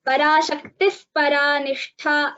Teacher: पराशक्तिः परानिष्ठा इति उपध्मानीयं वर्तते तत्र अर्धविसर्ग सदृशम् इति वक्तव्यम्